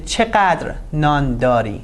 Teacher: This is a falling intonation and the stress is on چقدر. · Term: rising, falling intonation